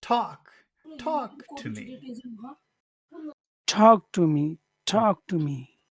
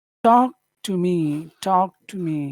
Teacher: phrase high or we'll start the end of it high but we do have to finish it low because normally a phrase will finish low